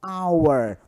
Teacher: na palavra hour, hora, tá? O H ele não é pronunciado. Eu chamo de H aspirado. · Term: H não pronunciado